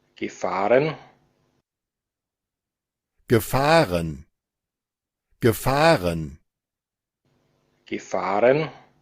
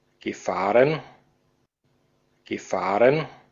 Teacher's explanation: el acento austriaco no está utilizando Schwa